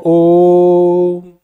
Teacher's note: ओ को थोड़ा लंबा खींचना है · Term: प्लुत